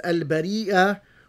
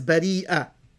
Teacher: both read this word as al-bari'ah with a hamza, or a glottal stop, by making a glottal stop in both instances.